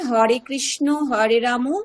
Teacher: বাংলা ভাষাতে শব্দের শেষে অ এর উচ্চারণ আমরা ওকারের মত করে